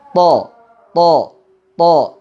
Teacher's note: Huruf to cara mengucapkannya sama dengan mengucapkan huruf T dalam bahasa Indonesia. Hanya pangkal dan sebagian tengah lidah kita ketika mengucapkan huruf to ini menegang dan terangkat mendekat ke arah langit-langit, sehingga suara huruf to menjadi tebal dan terasa sekali gema yang memenuhi mulut kita.